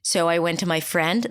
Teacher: always close it a lot of times you'll hear people just going up and up and up and it always sounds like a question mark at the end which I I guess creates more uncertainty it sounds more uncertain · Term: upspeak